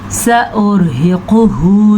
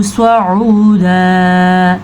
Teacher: سین جو ہے وہ سیٹی کی آواز کے ساتھ ہوتا ہے اور سوا جو ہے وہ پر پڑا جاتا ہے